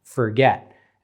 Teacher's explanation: if it's forget, the stressed syllable is get